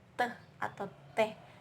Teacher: ujung lidah menyentuh bagian belakang gigi atas